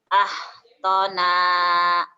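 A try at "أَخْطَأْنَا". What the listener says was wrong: ahtona itu kan ada hamzah mati ditekan ahtona neken kho jangan kho ahtona neken dengerin tokna neken dikit tokna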